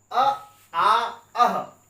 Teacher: अ आ अह ये तीनों कंठ होते हैं